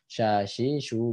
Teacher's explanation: huruf syin Ini mengandung sifat yang namanya tafasi tafasi itu adalah mengalirnya udara ya di mulut itu mengalirnya menyebarnya udara